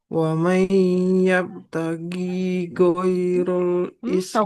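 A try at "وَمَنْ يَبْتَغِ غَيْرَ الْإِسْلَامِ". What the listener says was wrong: Ghainnya nggak panjang Ibu. Huruf ghain kasroh. Nggak ada ya di depannya nggak panjang. Wa may yabtaghi ghairal islami dina.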